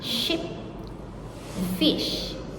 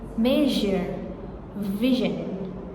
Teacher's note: Next is group C, sh and zh sounds, post-alveolar sounds. Ship, fish, voiceless.